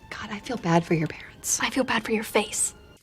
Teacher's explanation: pronounced with a dark L at the end of the syllable to pronounce that that dark L feel the middle of your tongue going really high in the mouth making contact with the palette